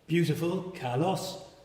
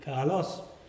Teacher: your voice rose on the second syllable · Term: acute